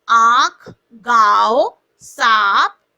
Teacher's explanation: अनुनासिक का उच्चारण नाक और मुंह से किया जाता है।